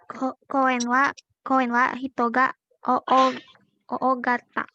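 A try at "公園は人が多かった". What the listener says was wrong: Koen wa hitonga. Dibacanya jangan kata. O kata. Panjang aja tapi jangan kata. O kata ya.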